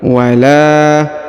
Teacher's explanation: huruf la dibaca panjang dua harakat karena di depannya terdapat Alif